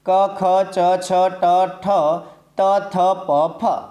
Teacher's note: જે વ્યંજનનો રણકાર કઠોર લાગે તેને આપણે અઘોષ વ્યંજન કહીએ છીએ